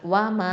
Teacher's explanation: வாவ் ஃபத்ஹாவா, மீம் ஃபத்ஹா, அலிஃப் மத்து, மா 2 ஹரக்கத்தை நீட்டணும்